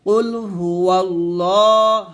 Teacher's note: পেশ হু এটা কুলহু আল্লাহ হবে লাম খারা জবর ল মোটা হবে